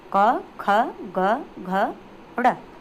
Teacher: कंठ है जो कि हमारे कंठ से बोले जाते हैं, यानी गले से जो बोले जाते हैं